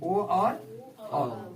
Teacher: कंठ और ओष्ठ मिला करके दोनों ये वर्ड बोले जाते हैं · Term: कंठ ओष्ठ